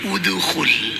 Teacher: muncul suara harakat harakat antara fathah dengan kasrah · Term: qalqalah